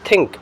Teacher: upper front teeth and inner part is the passive articulator and the tip of the tongue is the active articulator. The sounds are think. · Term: dental